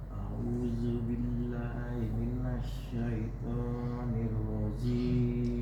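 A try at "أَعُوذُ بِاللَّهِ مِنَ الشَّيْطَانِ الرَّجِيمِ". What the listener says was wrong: A'udzu, za-nya tipis ini Pak. Za. A'udzu. Coba za-nya dikeluarin dulu lidahnya, baru keluar huruf za. Keluarin dulu Pak lidahnya lewat dari gigi seri.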